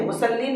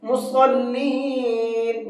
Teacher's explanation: صاد ہے، سین نہیں ہے، مسلین نہیں پڑھنا ہے، مصلین منہ بھر کے پڑھیں گے